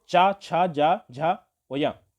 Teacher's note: जो अपना मुंह का जो ऊपरी भाग है वहां पर जब भी आप चा का उच्चारण करते हैं तो आपने देखा होगा कि जो जीभ है हमारी वो तालु को स्पर्श करती है। ऊपर का जो तल है ना, ऊपर का जो एरिया है मुंह का, उस पर जीभ टच होती है और नीचे आती है।